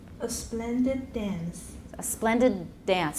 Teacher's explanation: consonants shortened when it's before an identical consonant